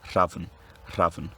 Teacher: It may seem like a subtle change, but this vowel takes a slightly more low central tongue position as opposed to a low back one